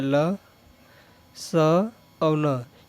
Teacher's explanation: ल, स और न, ये तीनों ही का उच्चारण स्थान कहाँ से होता है, दंत से होता है।